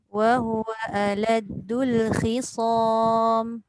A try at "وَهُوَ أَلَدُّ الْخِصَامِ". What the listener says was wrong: Tebalkan sok tu khisam.